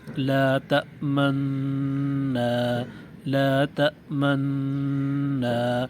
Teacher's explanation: ایک نون مشدد سے پڑھیں، لیکن مشدد نون پر غنہ کرتے ہوئے ہونٹ کو گول کریں، اور نون کی زبر پڑھنے سے پہلے ہونٹ کی گولائی ختم کر دیں۔